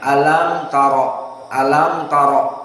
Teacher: alam mim sakinah bertemu dengan ta. Berarti apa? Kulukum. Idhar asy-syafawi. Maka jelas mimnya